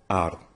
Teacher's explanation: A does not change when it's followed by R, and R is rolled